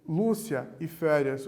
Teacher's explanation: Quando nós respondemos Lúcia e férias, o lu e o fé, nós temos as sílabas tônicas dessas palavras.